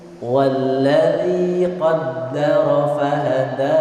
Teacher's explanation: Iya, betul. Qaddara, hati-hati walladzi atau alladzi, zal bukan dal. Zal tipis dia, bukan walladzi.